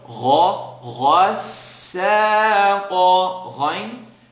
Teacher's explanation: Gha, third part of the throat.